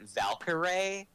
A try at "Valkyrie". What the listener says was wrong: Why do you say her name like Valkyrie? Valkyrie? Just say it more together instead of like each syllable pronounced.